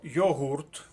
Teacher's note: слово йогурт наголос на другому складі